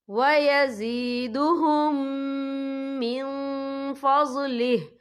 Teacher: اور آگے دیکھیں من، یہاں نون ساکن ہے، نون ساکن کے بعد جو ہے فا آ رہا ہے اور فا جو ہے اقفا کا ورڈ ہے، تو ہم یا اقفا کریں گے، نون ساکن کی آواز کو ناک میں چھپائیں گے · ہم پچھلے میم کو اگلے میم میں مدغم کریں گے اور ہم یہاں غنہ بھی کریں گے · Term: ادغام شفوی